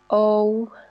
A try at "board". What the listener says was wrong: we don't say board, we say board. The first vowel sound is E, and the second one, it's not O. If it's bowed, then you can say there's O sound. We say board. What's the sound then?